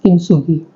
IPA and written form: kɪntˈsuːɡi (Kintsugi)